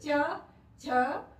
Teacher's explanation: जीभ जो है ऊपर की तरफ को मुड़ रही है ना, तो ऊपर के हिस्से को स्पर्श कर रही है, इसीलिए यह तालु स्थान इसको दिया गया है।